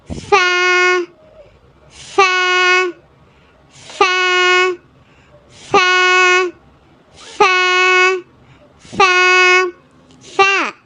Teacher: மேற் ரெண்டு பல்லும் நம்ம கீழ் உதடை வந்து ப்ரெஸ் பண்ணும்போது கிடைக்கக்கூடிய லெட்டர்